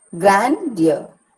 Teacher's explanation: Grand is stressed and ear is not. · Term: trochee